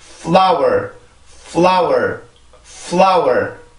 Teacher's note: 소리가 길어지는 위치가 아니라 여기는 F 발음의 순수한 소리만 만들어주고 바로 L로 넘어와야 돼요.